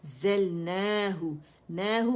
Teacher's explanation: نہو مد اصلی بن رہا ہے. ٹھیک ہے، 2 کاؤنٹ کے لیے آواز اوپر جائے گی. ہا ہو، ہا کر کے نہیں پڑھیں گے.